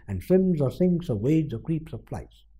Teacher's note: Stress is on swims, sinks, wades, creeps, flies. And the non-stressed ones are and, or.